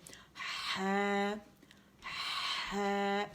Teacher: زبان کی جڑ کو نیچے دبائیں اور پھر پیچھے سے فرکشن کے ساتھ جو آواز آئے گی وہ آواز وسط الحلق سے نکلی بھی ہوگی